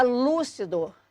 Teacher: Já a palavra lúcido, a sílaba tônica é o lu.